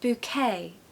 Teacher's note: the stress falls on the second syllable